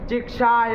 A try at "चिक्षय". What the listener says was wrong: और बोला उसको रस्व साफ साफ बोला।